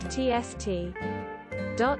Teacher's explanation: People would sharply suck in air through their clenched teeth to make the sound tst.